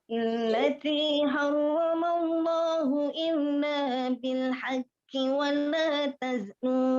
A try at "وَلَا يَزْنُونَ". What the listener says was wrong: Yaznun. Titiknya di bawah. Nah, ini di sini nih. Bil haqqi wa la yaznun. Ya, pendek. Haqqi wa la.